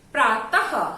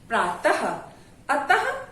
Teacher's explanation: विसर्ग का उच्चारण बहुत कुछ हा की भांति होता है